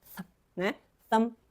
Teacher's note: é só vento, não tem vibration